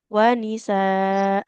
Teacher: hamzahnya panjangkan dua harakat